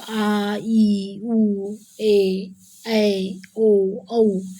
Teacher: जिन स्वरों को बोलने में ह्रस्व स्वरों की अपेक्षा में ज़्यादा समय लगता है, 2 मात्रा का समय लगता है, उसे दीर्घ स्वर कहते हैं।